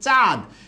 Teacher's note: এখানে চাঁদের মধ্যে চা টা যে আছে এই চা টা কিন্তু একটা আনুনাসিক বা নাসিক্য বর্ণসহ তাই এটাকে আমরা কি বলবো সানুনাসিক আশা করি সবাই বুঝতে পেরেছেন